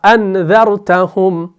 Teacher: آپ دیکھیں گے دونوں حمزہ کو پڑھ رہے ہیں تحقیق کے ساتھ صاف صاف